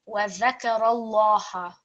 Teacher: because the lam mushaddad is preceded by fatha stroke, this is going to be a thick lam. وَذَكَرَ اللَّهَ rather than وَذَكَرَ اللَّهَ.